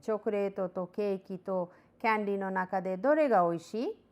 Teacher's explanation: Chocolate to cake to candy no naka de dore ga oishii, and intonation is rising.